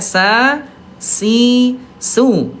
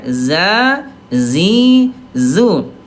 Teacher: sifat yang sama, namanya al istifal ayah Bunda, turun pangkal lidahnya